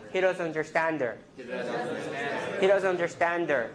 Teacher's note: So in a neutral phrase, you want to have a flap.